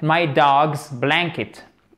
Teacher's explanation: Accent tonique sur la première syllabe.